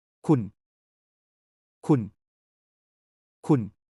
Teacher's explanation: Sounds like Khun with a rising tone.